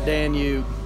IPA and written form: ˈdæn.juːb (Danube)